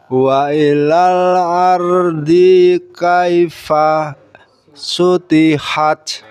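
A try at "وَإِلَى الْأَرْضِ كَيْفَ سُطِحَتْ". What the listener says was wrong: Ulang sekali lagi, dinya dinya pendek. ardi kai.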